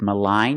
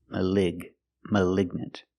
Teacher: With malign, you have the long I, malign. And with malignant, you have the short I, the I sound.